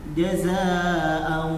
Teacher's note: kalau udah belajar tasin jazaa'u harus ada masuk ke hidung sedikit. Jazaa'u wifaqa, bukan jazaa'u wifaqa.